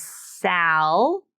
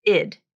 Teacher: Now, in the second syllable, I just wanted to point out that even though salad is spelled with the letter A in both syllables, it's pronounced differently in both syllables. Okay, so the full pronunciation is sal with the a vowel like in apple, but the next syllable is id.